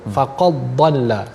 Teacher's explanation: Tidak ada mendengar athar dal, tidak mendengar kesan pada huruf dal tersebut. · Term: idgham